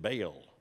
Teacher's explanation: if you grew up where I did, it was pronounced without the diphthong, it was just Baal